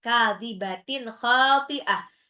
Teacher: tanwin ketemu kha itu adalah izhar, jelas